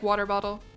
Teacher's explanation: a Midwestern thing to pronounce the T's as D's